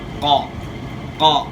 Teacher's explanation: زبان کی جڑ کا وہ حصہ جو گلے والی سائڈ پہ ہے اوپر لگائیں گے تو موٹا قاف ادا ہوگا، اور زبان کی جڑ کا وہ حصہ جو منہ کی طرف ہے اوپر تالو کے ساتھ لگائیں گے تو چھوٹا قاف ادا ہوگا.